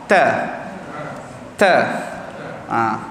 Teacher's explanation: Okey, sebut ta. Letak di gusi. Kemudian keluarkan angin, masuk suara.